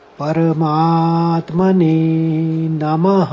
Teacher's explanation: इन्हें बोला जाता है आघात। जो म है शब्द है उसको स्ट्रेस करके बोलना है यानी पूरा जोर लगाना है